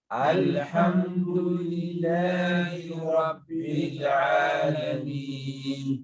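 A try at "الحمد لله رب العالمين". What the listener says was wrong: So the two lambs. Alhamdu, don't bounce. It's not alhamdu, it's alhamdu. Alhamdu, and then Rabbil Alameen, not Rabbila. Don't bounce the lamb. Rabbil Alameen.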